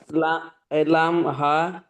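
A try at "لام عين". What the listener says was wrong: লাম হা না, এটা লাম আইন।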